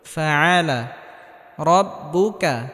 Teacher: কাফে হালকা বাতাস বের হবে। আর রটা পুর বা মোটা করে পড়তে হবে।